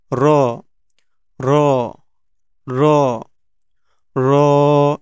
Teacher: আমাদের জিহ্বার আগার পিঠ তার বরাবর উপরের তালুর সঙ্গে লাগিয়ে উচ্চারিত হবে